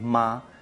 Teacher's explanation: Simple ejemplo, voy a hacerlo con un sonido que es ma. Ma, primer tono, arriba y se mantiene